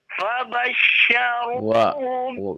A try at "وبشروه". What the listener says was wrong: Bukan fa, wa. Nadanya juga sudah bagus. Konsentrasi ya Pak ya. Konsentrasi untuk panjang pendeknya ya.